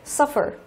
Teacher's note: động từ có hai âm tiết nhưng lại rơi vào âm thứ nhất